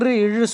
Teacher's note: தெரியும் ர் இழு சொன்னீங்கன்னாவே அங்க போயிட்டு வந்து அங்க வைப்ரேட் ஆகும் சரிங்களா அந்த மேல்வாயாண்ட நாக்கு போயிட்டு ஒரு வைப்ரேஷன் மாதிரி ஆகும்